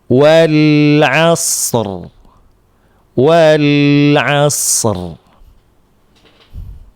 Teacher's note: Jangan dibaca wal as. Rnya jangan sampai hilang. Walaupun di sini shadnya sukun, rnya ini juga disukunkan.